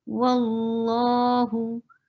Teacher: the Jalala, letter of Allah subhanahu wa ta'ala's name is always heavy